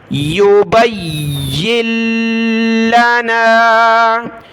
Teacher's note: یا اور لام کو سخت کرنا ہے، دونوں کے اوپر تشدید ہے، اس وجہ سے نون کو بالکل بھی نہیں پڑھنا۔